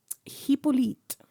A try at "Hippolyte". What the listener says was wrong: But they don't pronounce H in French.